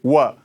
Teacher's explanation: जब आप व बोले तो होठों को सटने ना दें।